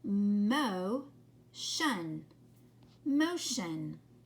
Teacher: notice how these vowels are long in front of the shun